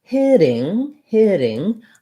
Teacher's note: i don't use a true t here i don't say hitting but rather it sounds more like a d but it's not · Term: flap t sound